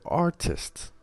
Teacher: So for example, the word art, if we add ist to the end, if we add this suffix, we will have the word artist. The stress will be kept on the original word art.